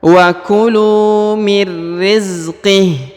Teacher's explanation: huruf ha di ujung disukunkan atau dimatikan ya, karena berada di ujung ayat atau ujung bacaan